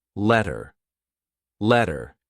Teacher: this was T changing into D or R